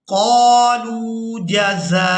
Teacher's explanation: اب یہاں پر دیکھیں کہ واو بھی ہے اور حمزہ بھی ہے، اور حمزہ کے اوپر ہے پیش، تو ہم نے یہاں پر واو کو ادا نہیں کرنا، حمزہ کو ادا کریں گے اور حمزہ کو بغیر کھینچے ہی ادا کریں گے۔